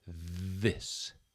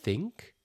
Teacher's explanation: This time there is vibration in the vocal cords and it is a voiced sound.